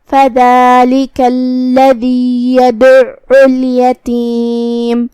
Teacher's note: عین کی ادائیگی حلق کے درمیان والے حصے سے ہے جو کہ اس پہ تشدید ہے تو ہم عین کو 2 حرف کے برابر پڑھیں گے